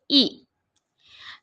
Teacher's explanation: حمزہ حلق کے نچلے والے حصے سے ادا ہوتا ہے